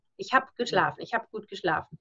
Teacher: final obstruent devoicing of German kicks in. That means that the B becomes a P.